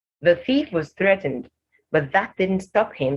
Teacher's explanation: only thief and threatened have the voiceless TH sound in the first sentence